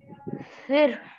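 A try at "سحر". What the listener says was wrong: सिर, सिर नहीं होता ना ये, हा भी है यहाँ पे, हा की आवाज आना। सिहर, हा की आवाज आना, सिहर।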